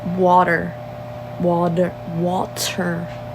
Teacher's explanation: t in that word I don't know what is with us we can't pronounce our T's everything's with a d